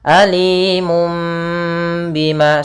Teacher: Iklab yaitu membalikkan, ya, membalikkan suara mim, membalikkan suara nun menjadi suara mim. Alimum bima, sambil ditahan 2 harakat.